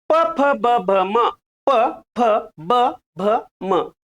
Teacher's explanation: याचा उच्चार करताना वरचा होठ आणि खालचा होठ, होठाला होठ लागतो, म्हणून याचं उच्चार स्थान आहे ओष्ठ्य